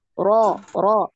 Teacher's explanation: untuk dhammah dan fathah ya, itu dinaikkan pangkal lidah karena dia bacaannya tebal ya, tafkhim ya, tebal